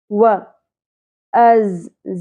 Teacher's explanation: زا کو ہم نے شدت سے اور سیٹی کی آواز کے ساتھ ادا کرنا ہے